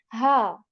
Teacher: this ha you don't put much put much effort right again the tongue is in resting position very normal State and the voice is just coming from the throat